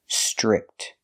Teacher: The TR makes a ch chicken sound. Strict. Make the short I sound like this is.